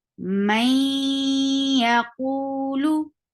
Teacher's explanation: we will merge this noon sound into ya, and that will become may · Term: merge sound